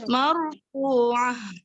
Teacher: ha yang tenggorokan bagian dalam, bukan yang bagian tengah. Jadi harus marfu'ah gitu. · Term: ha domir